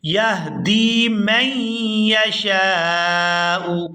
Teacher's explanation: یہاں دال کو یا ساکن کے ساتھ ملائیں گے تو کھینچ کر ادا کریں گے